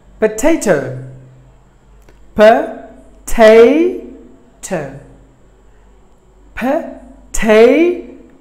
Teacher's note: the stress falls on the middle syllable